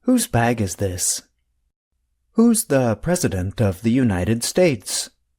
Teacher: The contraction and the possessive adjective both sound the same. They are both pronounced with the sound of the letter Z at the end.